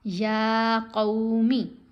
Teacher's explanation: یا کے اوپر کھڑا زبر ہے، اس کو لمبا پڑھیں گے